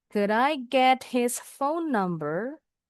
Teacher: D-nya disambung ke I.